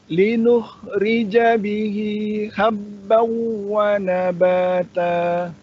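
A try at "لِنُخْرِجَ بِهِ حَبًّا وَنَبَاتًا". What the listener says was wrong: Kurang tahan. Habbau wa, kurang lama. Nanti masih kurang lama, Pak. Habbau.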